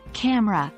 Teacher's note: smoothly for example the word camera is often pronounced as camera with the middle e disappearing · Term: elision